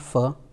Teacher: it is labiodental the lower teeth touches to the upper lip